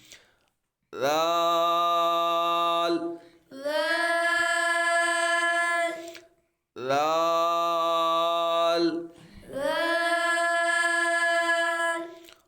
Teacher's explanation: دال، دال، دال، دال، رال، رال، رال کو لمبا کرنا ہے، اوپر مد ہے، اور رال جب پڑھیں گے یہ حروف لیسوی ہے، زبان کا سرا اور اوپر کے دانتوں کے اندرونی کنارے سے ادا ہوتا ہے، تو آپ نے زبان کا سرا اوپر کے دانتوں کے ساتھ لگانا ہے۔